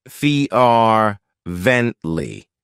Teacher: it has three syllables and the stress is on the first syllable